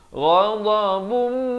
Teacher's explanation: Ghadabum di sini masuk beserta dengung dua harakat.